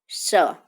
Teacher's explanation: મૂર્ધન્ય શ એટલે પેઢાની ઉપર અડશે